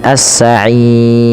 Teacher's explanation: pada lafal ro sendiri ada hukum tajwid juga berupa ro tarqik. Ro yang dibaca tipis